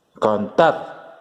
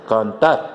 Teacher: El tar es la sílaba tónica